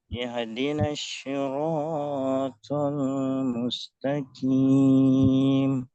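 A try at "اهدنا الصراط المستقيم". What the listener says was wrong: Baik, huruf shad jadi huruf sya tadi. Nah, di sini juga terlalu imalah. Ihdi enggak. Enggak enggak enggak. Ihdi. Ihdinas si. Ihdinas sirata.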